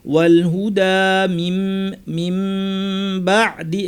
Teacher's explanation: ওয়াল হুদা মিম বাদি, এখানে নুন সাকিব বা এসেছে, বিধান নাম হচ্ছে ইকলাব, অর্থাৎ নুনকে পরিবর্তন করে মিম বানিয়ে গুন্নাটাকে লম্বা করে পড়তে হবে। মিম বাদি মা টান আছে, মা বাইয়ান, নুনের উপর তাসদীদ, লম্বা গুন্না, আবার আলিফ, গুন্নাটাও লম্বা করতে হবে, আলিফটাও লম্বা করতে হবে।